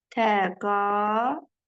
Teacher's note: bu saitlərin arasına tələffüzdə bir Y samiti daxil olur